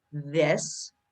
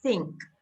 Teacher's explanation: there's a voiced version, as in this, and there's an unvoiced version, like think